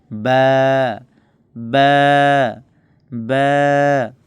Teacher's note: বা হরফটি দুই ঠোটের ভিজা অংশ হইতে এই বা হরফটি উচ্চারণ হয়